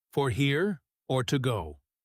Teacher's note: Let your voice rise just a bit higher on go than it did on here.